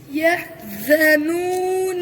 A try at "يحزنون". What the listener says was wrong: अब वक़फ़ करना ولا هم يحزنون नू को नाक में न पड़े